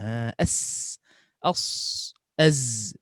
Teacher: Dia ada ekstra daripada nafas. Maknanya dia ada bunyi macam siulan. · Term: safir